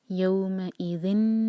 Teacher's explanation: تنوین کے بعد نون ہے تو ہم نون سے جوڑیں گے